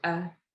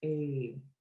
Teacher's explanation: a single E is a short E, and that's pronounced eh. But if you lengthen that vowel as you speak it and draw it out, it's A